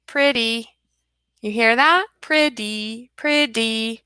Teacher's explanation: it's not that harsh T sound but a softer D